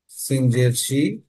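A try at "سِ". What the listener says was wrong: হয়ে যাচ্ছে কেমন যেন, জেরের উচ্চারণের ক্ষেত্রে মাঝে মাঝে একারের মতো হয়ে যাচ্ছে, কিন্তু আরবিতে কোনো একারের উচ্চারণ নেই। সি। সি।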